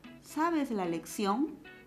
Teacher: estamos viendo que el tono final tiene que subir para poder interpretarse la pregunta esta es una oración interrogativa que espera una respuesta